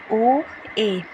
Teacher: अर्ध संवृत स्वर में इसमें लगभग मुंह खुला रहता है